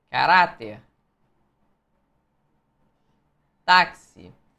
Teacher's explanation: o que você tem aqui são palavras paroxítonas. A sílaba tônica é a penúltima